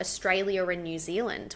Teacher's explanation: We put an R in there. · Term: Intrusive sounds